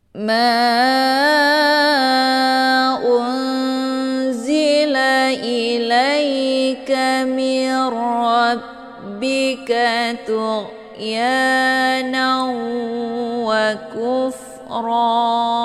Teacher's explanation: nunnya dimasukkan ke dalam huruf ra dengan cara ditekan dan masuknya adalah kamil secara sempurna tanpa tersisa makhraj nun. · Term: idgham bila gunnah